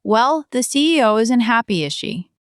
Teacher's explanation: Voice falling, conspiratorial.